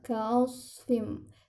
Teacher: Nah, ujung lidahnya diarahkan kepada gigi seri bagian depan. Bedanya dengan sin, pangkal lidahnya naik, jadi dia akan menebal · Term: huruf so